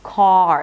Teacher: once you pronounce the vowel, let's say 80% of the sound, then the last 20% would be the R